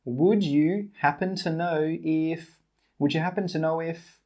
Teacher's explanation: We don't say 'would you'. We say 'wouldjuh'.